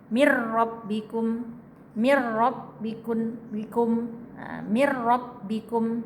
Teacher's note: nun mati ketemu ro, nunnya hilang, keronya, tapi tidak boleh dengung.